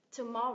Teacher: cái âm thứ hai được stress chính và âm cuối cùng được stress phụ